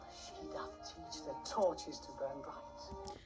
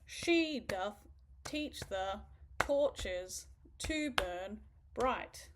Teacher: every second syllable is pronounced, pronounced with more emphasis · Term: iambic pentameter